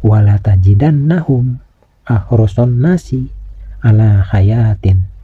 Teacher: Huruf nun yang bertasdid ini harus dibaca gunnah, yaitu dibaca dengung ke hidung. Panjang dengungannya sekitar 1 alif setengah atau 3 ketukan.